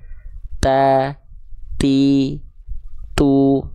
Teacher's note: jadi ujung lidah kita ke Pangkal gigi Sari atas kita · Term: huruf ta